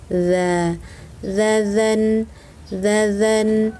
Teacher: ini adalah ujung lidah yang menyentuh ujung kedua gigi seri atas, sama seperti huruf "tsa ".